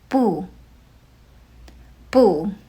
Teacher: Bù uses the fourth tone. The fourth tone starts high and drops sharply.